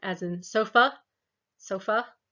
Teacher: Make our tongue more in the center for things like as in bird, the schwa sound, as in sofa, sofa.